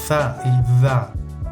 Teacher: dentales con la lengua entre los dientes